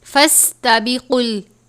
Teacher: سین حروف صفیریہ میں سے ہے، ادا کرتے وقت آواز سیٹی کی طرح نکلتی ہے